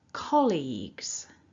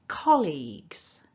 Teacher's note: remember we're stressing syllable one.